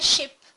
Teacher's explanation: la vocal es corta y es como un sonido seco con un golpe seco